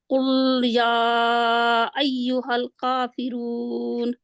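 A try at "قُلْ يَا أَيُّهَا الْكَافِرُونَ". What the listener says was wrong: आपने ऐसा किया कि पहले आप मखरज में रहे फिर उसको छोड़ दिया, आगे बढ़ने से पहले आपने छोड़ दिया, छोड़ना नहीं है।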